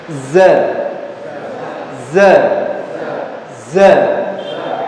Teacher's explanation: Jadi dia keluar dari sela-sela yang sempit antara ujung lidah dengan ujung gigi seri atas dan bawah. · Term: suara sofir